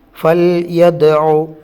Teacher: ദാല് കൽക്കലൻ്റെ അക്ഷരമാണ്, തറപ്പിച്ച് വേണം ഓതാൻ